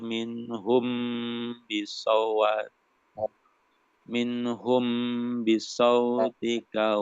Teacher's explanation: ada mim sukun ketemu ba kasroh, itu dibaca dengung